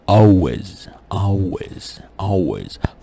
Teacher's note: من ضمن هذه الفروقات إنه حرف ال L change to W sound after a vowel. So if L appears at the end of the syllable, it's pronounced like W sound.